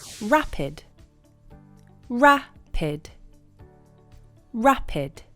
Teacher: The stress is on the first part of the word, rapid.